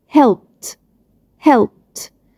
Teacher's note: عندي الفعل help اخره voiceless sound اللي هو ب sound، فلما هضيف ايدي صوت الايدي هيتحول لصوت ت.